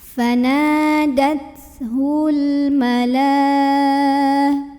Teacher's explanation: Ditandai dengan lam yang sukun ya. Maka cara membacanya adalah lam ini terbaca dengan jelas atau diidharkan ya. Oleh karena itu alif lam qamariyah biasa juga disebut dengan idhar qamariyah karena bacanya jelas.